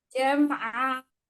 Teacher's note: Jamnya jangan pakai tenggorokan. Jam'a, ainnya yang pakai tenggorokan.